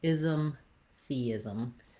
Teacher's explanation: the ism syllables are going to be shorter and have reduced vowels